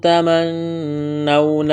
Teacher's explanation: نون مشدد پر غنہ کریں گے، واولین ہے، کھینچنا نہیں ہے